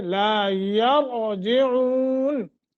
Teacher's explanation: را ساکن ہے، ما قبل فتح ہے، اس فتح کی وجہ سے را کو موٹا پڑھیں گے۔